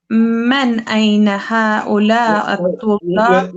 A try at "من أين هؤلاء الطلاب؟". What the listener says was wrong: You're saying man again. You've gone back to saying man. It's min.